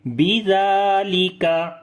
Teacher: Zal we read in soft sound and also we long due to standing fatha on it.